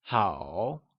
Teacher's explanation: Hǎo is also said with a falling rising tone